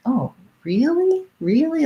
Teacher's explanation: where i would probably use the tense e really is if i'm stretching it out